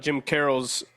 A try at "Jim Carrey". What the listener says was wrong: Jim Carrey. Yeah, you said Carroll. Carrey. Jim Carrey.